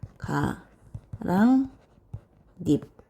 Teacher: 두 번째 과정에 가랑잎 할 때 받침의 피읍이 비읍으로 발음되니까 음절의 끝소리 규칙